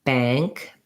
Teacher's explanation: it sounds more nasalized on the ah, because that NG sound means that as I'm getting ready for the NG, it affects how the vowel sounds